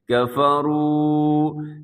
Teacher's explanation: واو ساکن سے پہلے پیش ہو واو مدہ کہتے ہیں، اس کو اپنے لمبا کرنا ہے۔